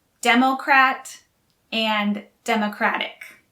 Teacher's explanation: the stress is on the first syllable for democrat and democratic